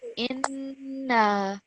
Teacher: So remember, this is alif madda because the letter before has got the fatha stroke. It's going to be 2 seconds.